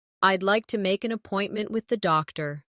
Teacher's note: Keep the stress on appointment so the listener understands the purpose.